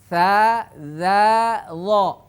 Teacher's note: ke gigi seri atas makhraj dza sama dengan tsa dan Dho tsa dza Dho itu persis sama posisi lidahnya